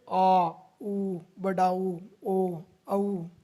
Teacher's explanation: जिस स्वरों के उच्चारण में जीहा का पिछला भाग सक्रिय रहता है वे पश्च स्वर कहलाते हैं, जैसे आ, उ, बड़ा ऊ, ओ, औ इत्यादि।